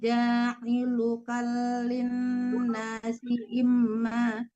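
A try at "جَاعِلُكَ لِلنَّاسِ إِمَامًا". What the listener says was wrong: ja'ilukal, lamnya tidak tasdid. Yang tasdid itu nun. Ja'ilukalin.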